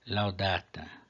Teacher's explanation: a penúltima é longa, acento na penúltima.